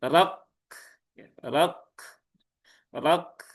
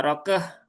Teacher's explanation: Jadi ketika dalam kondisi sukun ya kaf ini dia tunaikan dulu syiddahnya gitu ya tunaikan dulu syiddahnya. Setelah itu baru hamsnya gitu kan. Jadi rok nah begitu kan. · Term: sifat hames dan sifat syiddah